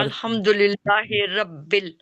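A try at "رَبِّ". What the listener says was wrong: रब्बिल नहीं, रब्बिल, रॉ मोटी पढ़ते हैं, रॉ के ऊपर जबर है ना। रब्बिल आलमीन।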